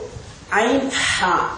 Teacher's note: இந்த இரண்டு எழுத்துக்களும் தொண்டையின் நடுப்பகுதியினால் வெளியாகக்கூடிய எழுத்துக்கள்